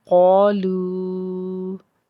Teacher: क़ा, लाम वाव पेश लू, लाम को नरमी से, आगे मद है, तीन छोटी मद है, इसको तीन अलिफ के बराबर खींच के पढ़ेंगे